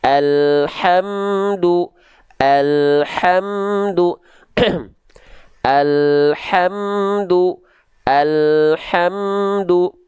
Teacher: pastikan ha kecil dilafalkan dari mana dari tengah tenggorokan ya oke pastikan nafas yang mengalir adalah nafas yang berbisik · pastikan alirkan nafasnya dengan karakteristik nafas yang berbisik dari tengah tenggorokan